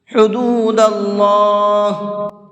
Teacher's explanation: حدود اللہ، ہا کو حلق سے نکال کر کے پڑھیں گے، اور اللہ کے لام کو منہ بھر کے پڑھیں گے، اس لیے کہ اللہ کے لام سے پہلے زبر ہے، اور اللہ کے لام سے پہلے زبر ہوتا ہے تو اس اللہ کے لام کو منہ بھر کے پڑھتے ہیں۔